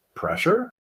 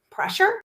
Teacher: Instead of asking a full question, you just repeat the word or phrase you didn't understand, but you say it with a rising intonation, like a question